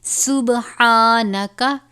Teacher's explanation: ہا کے اوپر کھڑا زبر ہے ایک الف کے برابر، اور ہا کو ہم نے باریک پڑھنا ہے